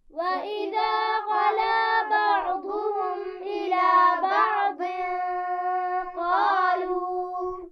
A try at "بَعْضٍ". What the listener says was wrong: عین پر قلقلہ نہیں ہونا چاہیے. بعض،